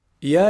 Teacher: is pronounced from the middle part of the tongue and the roof of the mouth